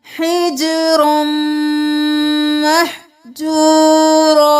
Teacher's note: ادغام مع الغنہ، را کو میم کے ساتھ ملائیں گے غنہ کرتے ہوئے